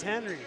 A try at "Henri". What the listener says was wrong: No, they want the French pronunciation. Is it the English or French? He said it's the French way. So almost like, Henri Richard.